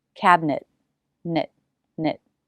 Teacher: the tongue goes to the roof of the mouth for the n and quickly flaps down for the vowel then right back up for the t